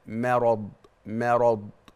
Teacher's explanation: خلي بالك من ترقيق الميم لان الميم مرققه والراء مفخمه